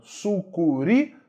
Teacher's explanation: Oxítona não. Sucuri, sílaba tônica é a última.